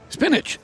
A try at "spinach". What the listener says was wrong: You added a D. No, you're adding like a J or something. A D or a J.